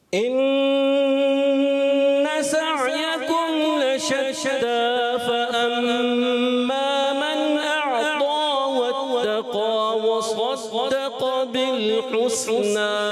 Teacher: وصدق میں صاد وصدق، صاد کو پر رکھنا ہے پیارے بچے، اور اس کے علاوہ جو فأما میم مشدد میں ایک الف کا ہم غنہ بھی کریں گے